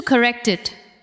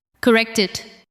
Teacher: The final sound of correct connects to it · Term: linking